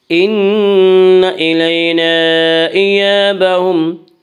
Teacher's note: ان نون مشدد غنہ ہوگا، غنہ کی مقدار ایک الف ہے